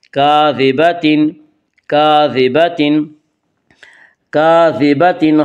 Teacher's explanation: ناصیۃ کاذبۃ، ناصیۃ کاذبۃ، کاذبۃ، الف مدہ، الف ہمیشہ مدہ ہوتا ہے، الف سے پہلے ہمیشہ زبر ہوتا ہے، الف مدہ کو ایک الف کے برابر کھینچ کر پڑھیں گے